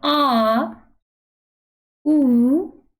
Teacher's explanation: आप बोलेंगे तो पीछे से आवाज आती हुई मालूम पड़ेगी। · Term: पश्च स्वर